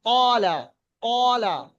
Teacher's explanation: কলা যখন পড়বেন আপনার মুখটা গোল হবে আর শব্দটা একটু মোটা হবে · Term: পুর